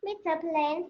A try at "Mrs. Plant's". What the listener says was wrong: It's Mrs., not Mr. Okay? Mrs. Plants.